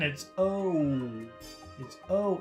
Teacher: it's a very long sound it's two sounds again